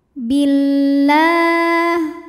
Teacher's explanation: Sebab alif lam menghadapi huruf syamsiyah yaitu lam. Cara membacanya alif lam tidak kita baca atau disebut dengan idgham syamsi.